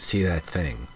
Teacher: So this that becomes like a duh sound.